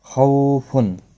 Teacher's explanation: خو واولین ہے، تھوڑا نرمی کے ساتھ کھینچ کر ادا کریں گے، خو مستعلیہ ہے، پر پڑا جائے گا۔